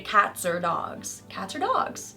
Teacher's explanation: So we also have some R-colored vowel going on with or.